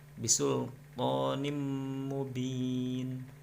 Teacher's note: Jadi harus dengung, ditahan 2 harakat.